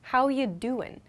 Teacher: i removed the g in doing